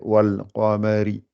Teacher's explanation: Donc le qa est gonflé, le al, wal n'est pas gonflé et ma n'est pas gonflé. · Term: lettre gonflée